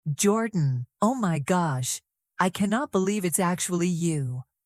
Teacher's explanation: Notice how voice rises quickly at the beginning.